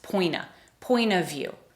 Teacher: Even the T in the word point disappears a little